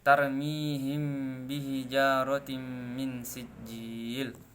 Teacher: bertemunya bibir atas dan bawah dari huruf hijaiyah mim dan huruf hijaiyah ba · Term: ikhfa syafawi